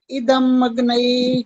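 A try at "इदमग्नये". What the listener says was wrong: नहीं नहीं अभी भी इदम अगन आ रहा है अया साउंड अलग नहीं निकालनी है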